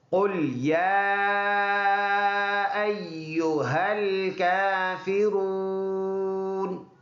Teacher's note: موٹا قاف ہے تو یہ تالو سے ادا ہوگا